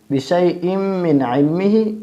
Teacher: دو زیر کو میم میں مدغم کریں گے